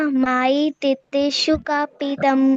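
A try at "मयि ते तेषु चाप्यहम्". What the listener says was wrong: चापी, च होता है ये, च।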